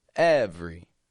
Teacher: we're dropping that E from the middle of. And we're just giving it a quick 2-syllable sound.